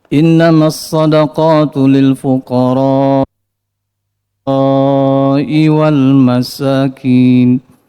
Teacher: Ibnu Mas'ud membacakan kalimat fuqara dengan mad dengan panjang